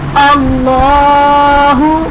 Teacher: اب دیکھیں اس میں جلالت اللہ عز و جل کے لام سے پہلے زبر آ رہا ہے، الف پر زبر ہے تو اس لیے اس میں جلالت اللہ عز و جل کے لام کو ہم پر پڑھیں گے